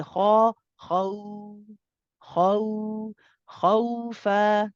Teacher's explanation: Again, idhar shafawi, same thing, nice and clear. Khawfan, the waw is a rakhawa letter. We let it run. The kha is heavy. The waw is light. We say kha, khaw, khaw, khawfa. · After saying ha, you switch to a nice light waw.